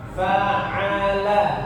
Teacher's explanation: jangan fa'ala, bukan nga tapi a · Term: huruf ain